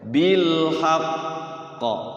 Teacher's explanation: kalau yang bertasdid dia mantulnya agak lama ditahan dulu kira-kira 2 detik